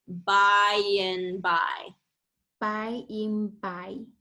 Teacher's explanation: Because it's a little bit hard to get from the long I to the short I. So we do like a y sound in the middle to transition. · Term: glide